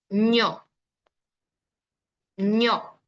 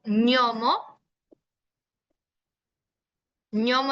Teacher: Aquí, pues en la parte palatal, siempre les digo que es un sonido donde la lengua se acerca al paladar duro, o sea, la parte más dura de nuestro paladar, ¿no? Un ejemplo.